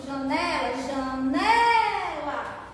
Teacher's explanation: a sílaba mais forte é o né